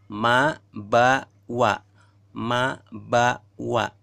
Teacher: keluar di antara 2 bibir